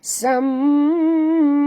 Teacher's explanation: Sam di sini kena dengung tuan-tuan, kerana bila mim bersabdu berarti ada 2 mim dekat sini. Jadi kita kena baca dengung kerana pertemuan asal di antara mim dengan mim ialah idgham mislain.